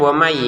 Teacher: Jadi dibacanya wami gitu ya, jangan waman karena nun sukunnya kita masukin ke ya